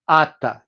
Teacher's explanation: The preconsonantal S is lost.